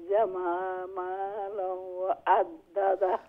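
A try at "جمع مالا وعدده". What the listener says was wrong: মালাউ এখানে ইদগাম করতে হবে গুন্নার সহিত। হ্যাঁ, জামা মালাউ এইরকম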